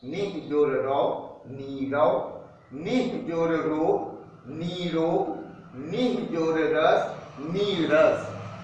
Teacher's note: क्योंकि ये नियम कहता है कि विसर्ग के पहले अगर कोई स्वर है और प्लस के बाद में अगर र हलंत है, यानी विसर्ग की संधि र के साथ हो रही है, तो उस स्थिति में विसर्ग के पहले वाला जो ह्रस्व स्वर होगा वह संधि होने पर दीर्घ हो जाएगा और विसर्ग का लोप हो जाएगा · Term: दीर्घ ई